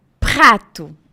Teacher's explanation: o r do francês nunca é da ponta da língua tá ele sempre vem atrás